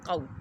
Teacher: قو، واولین ہے، قاف حروف مستعلیہ ہے، پر پڑھنا ہے، اور واولین کو ہم نے کھینچنا نہیں یعنی دراز نہیں کرنا